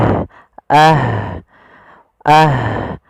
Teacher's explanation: ada sifat namanya sifat hames. Harus dialirkan nafas kita.